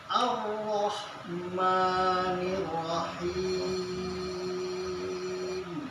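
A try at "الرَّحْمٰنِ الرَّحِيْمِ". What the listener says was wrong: nah, tekan lagi haknya. Yang terlalu panjang ininya.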